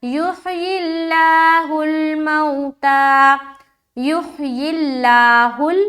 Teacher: تو پہلے والے حرف کو دیکھیں گے، اس کے نیچے کیا ہے، زیر ہے، تو اب کیا ہوا کہ اس لفظ اللہ کا لام کو باریک پڑھنا ہے، زیر آ گئی نا، تو لفظ اللہ کے لام سے پہلے زیر آ گئی تو اب اس کے کیا کرنا ہے، باریک کر دینا ہے۔ اگر زبر ہوتا یا پیش ہوتا تو ہم اس کو موٹا کر کے پڑھتے۔